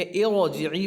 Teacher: इरजिई रा साकिन से पहले ज़ेर हो तो रा बारीक होगी, लेकिन यहाँ पर चूँकि एक कायदा वो था कि रा साकिन से पहले अगर हमज़ा आरज़ी होगा तो रा साकिन को बजाय बारीक पढ़ने के पुर पढ़ेंगे, इरजिई पढ़ेंगे।